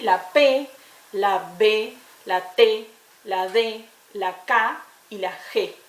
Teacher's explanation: Las primeras son las oclusivas, que son aquellas que necesitamos, que tienen que ver con un abrir y cerrar de las articulaciones y son como una explosión